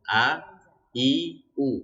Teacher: hamzah itu dia tempat keluar hurufnya itu dari kerongkongan yang paling bawah